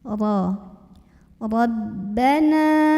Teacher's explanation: Ra-nya ini dibunyikan secara tafkhim ya. Karena ra-nya berbaris di atas, maka bacanya ditebalkan dengan cara mengangkat pangkal lidah kita.